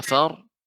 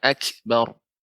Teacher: pada kata akbar wa kafar ini dibaca dengan tebal, ya, dengan dinaikkan naiknya suara ke langit-langit dengan lidahnya dikeataskan